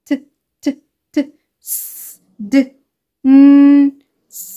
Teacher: your tip of the tongue is against the alveolar ridge